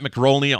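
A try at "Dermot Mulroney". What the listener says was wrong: Mulroney. No C in that last name.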